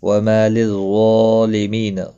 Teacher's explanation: مالف مدہ ہے اور ظا کے اوپر کھڑی زبر، دونوں کو ایک ایک الف کی مقدار کے برابر کھینچ کر پڑھیں گے